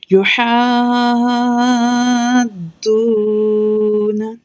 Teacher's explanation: اس کو 6 حرکات تک کھینچنا ہے، یعنی 6 سیکنڈ تک کھینچنا ہے، اور 2 حرکات ایکول ٹو ہوتی ہیں 2 سیکنڈ کے، اور 2 حرکات ایکول ٹو ہوتی ہیں 1 الف کے۔ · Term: مد لازم